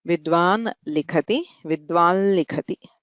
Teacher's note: यदि नकारः अस्ति तर्हि तस्य स्थाने आन्तरतम्यात् अनुनासिकः लकारः आदेशः भवति। विद्वान् लिखति, विद्वान् लिखति, ल इति अनुनासिकलकारः।